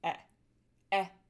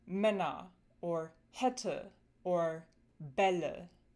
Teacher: The short {slash} lax version of the A umlaut is pretty straightforward. It's eh eh as in the vowel in the American English word red